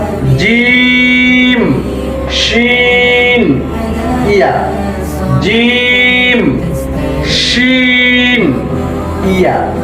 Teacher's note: জিহ্বার মধ্যখান তার বরাবর উপরে তালুর সাথে লাগিয়ে 3টি হরফ উচ্চারিত হবে